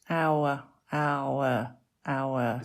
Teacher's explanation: It's got the /a/ and the /ʊ/. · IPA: /aʊ/